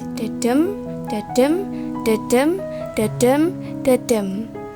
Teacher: There's 10 syllables, and the rhythm is da-dum, da-dum, da-dum, da-dum, da-dum.